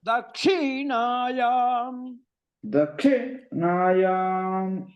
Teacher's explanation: దక్షిణాయం క్షి అనేటటువంటిది ఉదాత్తం